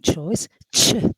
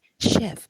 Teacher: You feel the combination of two sounds, ch. While in chef we have just one sound, which is sh sound, like in sheep.